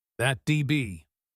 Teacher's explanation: The D in that'd connects smoothly to be. That DB. It is a soft sound.